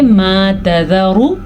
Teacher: را کو لمبا نہیں کرنا کیونکہ را کے اوپر صرف اور صرف پیش ہے. جب را کے اوپر پیش آ جائے تو را کو ہم لمبا نہیں کر سکتے کیونکہ پیش کی مقدار ہی اتنی ہوتی ہے, کسی بھی حرف کے اوپر آ جائے تو ایسا ہی ہوگا.